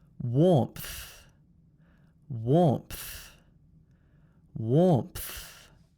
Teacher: can you hear the little th sound the breath being pushed out at the end